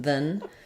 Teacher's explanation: it's a syllabic n not a lot of vowel there